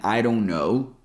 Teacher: I mean, you can pronounce it with the real D sound, but since D here comes between two vowel sounds, I and O, we pronounce it as a flap T. A flap T is that sound we hear in butter or water.